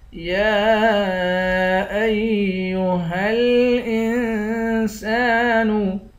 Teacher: یا پر کھڑا زبر ہے، اس پر مد بھی ہے۔ اس مد کو 3 الف کی مقدار کھینچ کر پڑھیں گے، ہا کو لام کے ساتھ ملا کر پڑھیں گے، حمزے کو نون کے ساتھ ملا کر نون پر اخفا کریں گے۔